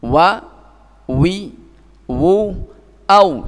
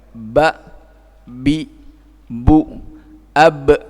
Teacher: Sama-sama dari huruf dua bibir, hanya untuk waw dengan dibuka, dipisah antara bibir atas dan bawah tidak nempel, sementara ba dan mim adalah dengan idmam, dengan ditempelkan dua bibirnya ini.